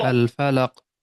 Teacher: قلقلہ کبرا گریٹر قلقلہ، یعنی کہ تیز آواز یہاں پہ نکلنی ہے جی اس کی